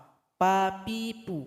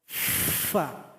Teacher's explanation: Yang betul itu ujung gigi seri yang paling atas tempelkan ke bibir bawah. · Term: huruf fa